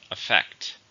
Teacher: How many syllables do you hear with effect? 2. Stresses on the second.